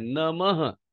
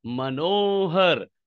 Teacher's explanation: ये जो विसर्ग है ना हमेशा ह के रूप में उच्चारण होता है